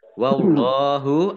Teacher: Allahnya dibaca tebal karena harokat di depannya fathah. Lam fathah berdiri, mat tobi'i.